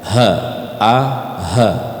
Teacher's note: Dia ngambilnya di pangkal tenggorokan.